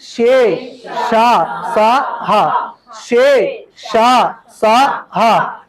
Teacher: వీటిని ఊది పలుకుతున్నారు కాబట్టి వీటికి ఊష్మములు అని పేరు